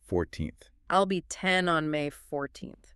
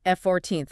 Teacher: So to highlight the fact that her birthday comes first, the stress aggressively shifts to the front of the word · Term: contrastive stress